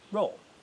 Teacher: R is trilled, as it still is today in modern forms of Latin, such as Italian and Spanish.